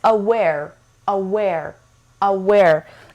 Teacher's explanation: And it has two syllables and the stress is on the second syllable. دو تا سیلاب داره، استرس روی سیلاب دوم هستش.